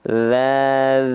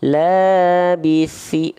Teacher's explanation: Ta di sini lafal kan sama kayak D tapi pakai nafas dia bocor